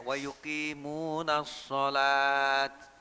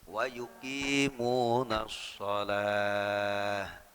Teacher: Karena wujudnya ini ada titik dua kan begitu. Tak marbutoh ini kalau dia diswakofkan berubah menjadi ha.